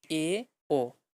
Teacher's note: যেরকম প্রায় বন্ধ অবস্থায় ছিল সংবৃত তার চেয়ে আরেকটু খোলা তখন সেটাকে অর্ধ সংবৃত বলব। যেমন এ ও অর্থাৎ সেই উচ্চ মধ্য স্বরধ্বনিগুলা।